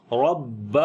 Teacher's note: با کے اوپر جو ہے وہ شد ہے، تھوڑی سی آواز کو سٹرونگ کریں گے اور ہلکا سا رک کر پڑھیں گے. ربہ، ہو کو لمبا کریں گے، اس کے اوپر الٹا پیش ہے.